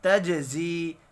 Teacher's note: جیم ساکن پر قلقلہ کریں گے